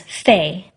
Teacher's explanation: Mandarin goes a little further with that second vowel all the way up to E instead of stopping at I.